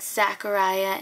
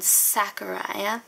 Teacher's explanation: z becomes the sound s